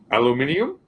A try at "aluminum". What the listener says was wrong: How is it minium? There's no IUM.